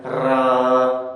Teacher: जब हम रा का उच्चारण करते हैं तो हमारी जिह्वा कंपन सा करती है, हमारी जिह्वा की नोक कंपन सा करती है। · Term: प्रकंपित व्यंजन